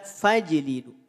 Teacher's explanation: Fa tak perlu dipanjangkan. Bacaannya langsung masuk pada huruf jim yang dipantulkan. 0 harokat, qalqalah pantulkan.